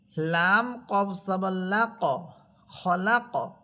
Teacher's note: পাঁচ হরফের উপর সাকিন হলে কলকলা করে পড়তে হবে এখানে দেখেন কফ হরফের উপরে আছে সাকিন এজন্য এখানে কলকলা হবে